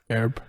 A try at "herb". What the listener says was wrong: It's not a silent H. Stop it.